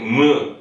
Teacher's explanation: 입술을 무는 소리잖아. 그래가지고 순경음 미음하면 무 할 때 입술을 무는 거지